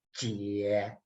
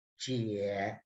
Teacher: So the sound is J-I-E is jie. And you see the third tone. So it's very low.